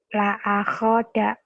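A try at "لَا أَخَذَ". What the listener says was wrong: la akhoda ya. Jangan ditekan ya. Kalau ditekan la akhoda, jangan ditekan. Jangan ada gendang-gendangnya.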